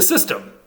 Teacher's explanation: the N doesn't just assimilate it goes away before the S they just dropped it completely so a s stem is a